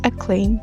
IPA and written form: əˈkleɪm (acclaim)